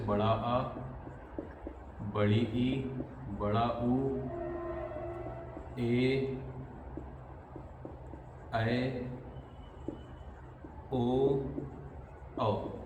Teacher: जिनका उच्चारण करने में ह्रस्व स्वर से दुगना समय लगता है। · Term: दीर्घ स्वर